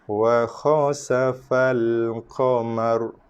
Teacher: Ra dibaca dengan tafkhim tebal